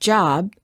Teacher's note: we cannot continue the final B sound. We stop the airflow by closing our lips. Therefore, B is a stop.